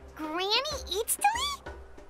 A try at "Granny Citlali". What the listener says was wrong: But emphasis on Eatsley, not Granny.